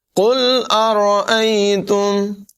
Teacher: قاف کی آواز پر ہوگی، را کو بھی پر ادا کریں گے